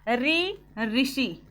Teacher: ऋ ऋषि आपका मूर्धा से बोला जाता है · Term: मूर्धन्य